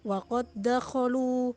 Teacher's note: Seperti contoh, dal sukun bertemu dal. Cara membacanya langsung diidghamkan dan tidak perlu ada qalqalah pada huruf dal. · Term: idgham mutamatsilain